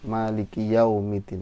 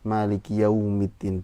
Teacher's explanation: domahnya masih ke o, maliki yaumiddin, harusnya maliki yaumiddin pakai u